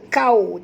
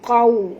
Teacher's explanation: Jangan baca kau, tapi baca qau. Ya, muncungkan mulut kita kena waw, itu sifatnya lin.